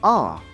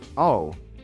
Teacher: It's ah, not oh. No drop, ah, like in the word awesome.